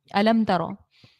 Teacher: میم ساکن کے بعد دیکھیں تو تا ہے، الم ترو، تو یہاں پر اظہار شفاوی کا قاعدہ لگائیں گے، غنہ نہیں کریں گے، رو پر زبر ہے، رو کو موٹا پڑھیں گے